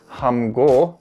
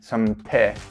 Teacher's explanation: Because myum is always voiced, it will make any standard consonants following it become voiced as well.